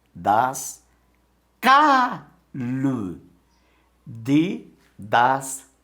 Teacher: Observe que a sílaba tônica, ela já saiu do das, ó, e foi para o cá.